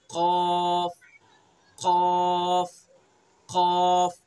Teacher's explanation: जबान की जड़ और उसके मुकाबिल ऊपर का तालु